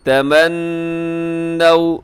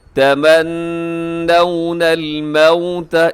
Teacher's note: نون مشدد پہ غنہ ہوتا ہے